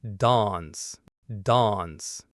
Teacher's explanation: Another big one is the ah sound, a word like dance. In Britain, it's often a long, open dawns, dawns.